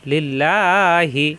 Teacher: লিল্লা হাজের হি, লিল্লাহি। আল্লাহ শব্দের ডানে জের আসছে এই জন্য লা হবে। জবর অথবা পেশ আসলে তখন ল হতো, অর্থাৎ মোটা হতো, এখন পাতলা।